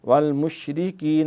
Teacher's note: شین میں تفشی ہے پھیلاؤ سے